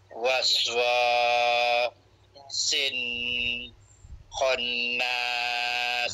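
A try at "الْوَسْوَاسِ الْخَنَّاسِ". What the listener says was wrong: Ha bukan sin. Nah kalau pak cik baca sin dia jadi huruf nun. Ni huruf lam.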